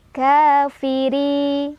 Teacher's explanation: ro-nya dibaca secara tarqiq karena ro-nya barisnya di bawah atau kasrah, jadi ditipiskan.